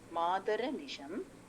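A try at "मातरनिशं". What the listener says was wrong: மாதரனிஷம். அப்படி அப்படி பிடிச்சுக்கோங்க, ரனிஷம் சேர்ந்து வரணும். மாதரனிஷம். இந்த மாதர் அனிஷம்ன்றத பிரிச்சனா மாமேவ மாதஹா அனிஷம் கலயந்து மான்யே அப்படி பிரியும். ஸோ அதனால அந்த ரா வந்து அடுத்த பிரிக்கும் போது அடுத்தது கொண்டு போயிடலான்னு சொன்னேன், வேற ஒன்றும் இல்லை. மாமேவ மாதர் அனிஷம்.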